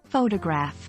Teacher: the stress is on the first syllable and the O in photo is pronounced with a long vowel sound